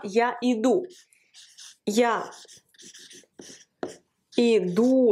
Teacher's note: l'accent sur le ou